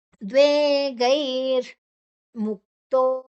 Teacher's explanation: ಇಲ್ಲಿ ವಿಸರ್ಗ ವಿಸರ್ಗದ ಉಚ್ಚಾರಣೆ ಋ ಬರೋದು ಮುಂದಿನ ಅಕ್ಷರ ಮು ಇದ್ರೆ